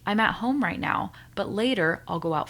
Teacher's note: So here I am assigning the same length of time to each syllable within the sentence. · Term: incorrect rhythm